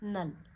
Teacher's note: نون کی آواز ناک میں لے جائیے اور ایک انگلی جتنی روکیے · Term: غنہ